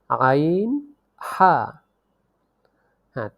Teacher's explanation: হলকের মধ্যখান হইতে উচ্চারিত হয় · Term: মাখরাজ